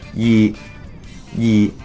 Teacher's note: similar to the fourth tone but just slightly lower pitched, to the point where you can't really tell the difference.